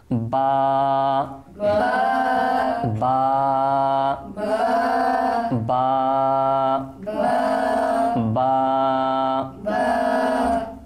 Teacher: সবাই আমরা মাখরাজের লিস্ট যেটা রয়েছে আমরা মাখরাজের লিস্টের দিকে একটু চোখ রাখি, তখন আমরা দেখতে পাবো এই বাকে বলা হয় হরুফে শাফাবিয়া। আর এই বা উচ্চারণ হয় উভয় ঠোঁটের বেজা অংশ থেকে